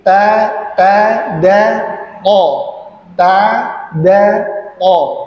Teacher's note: ujung lidah, ya, yang bersentuhan dengan apa namanya, gigi seri bagian atas